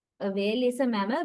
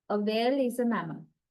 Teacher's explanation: Statements are used to give information, to pass factual information, right? So we are not rising our pitch level. Our pitch level is falling. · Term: falling intonation